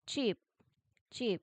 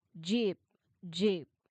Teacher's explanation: Now, for cheap, your throat should stay totally quiet and relaxed. For jeep, your throat should feel a buzzy and busy the moment your tongue touches the roof of your mouth. · So cheap is the voiceless or unvoiced one. Jeep is the voiced one.